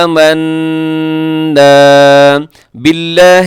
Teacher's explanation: یہاں باریک ہوگا لفظ اللہ جو ہے با کی نیچے زیر کی وجہ سے